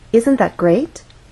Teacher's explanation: great has one syllable so we only have one syllable to make our voice glide up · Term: rising intonation